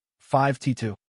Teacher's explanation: do you expect five to two. But you hear five t two. That tiny t sound